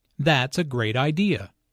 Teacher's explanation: Notice the emphasis on great.